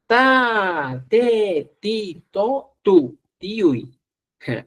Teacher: la lengua se apunta a los incisivos superiores